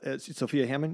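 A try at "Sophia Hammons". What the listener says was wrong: Unfortunately, Hammonds. no D. I'm sure with my sinuses, it might sound like there's a D in there. There's not.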